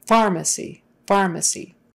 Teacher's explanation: the stress has to be on the far